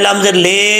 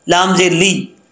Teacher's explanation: नुल खौ डी कून, खा हरूफ मुस्तालिया में से है, इसको एक अलिफ की मकदार लंबा भी किया जाएगा, आगे अलिफ है और पुर पढ़ा जाएगा ख्वा को क्योंकि हरूफ मुस्तालिया में से है। लाम के नीचे जेर है, लाम जेर ली होता है, लाम जेर ले नहीं पढ़ना, लाम जेर ले ये मजहूल हो जाएगा, गलत हो जाएगा, लाम जेर ली।